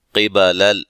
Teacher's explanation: قاف کو موٹا، لام کو ہلانا نہیں ہے